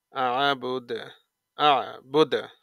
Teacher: দাল সাকিনে কলকলা প্রতিধ্বনি সৃষ্টি করে